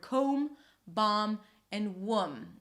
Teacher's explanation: when you have this consonant cluster, the B is often dropped or almost always dropped, like in the word comb, bomb, and womb.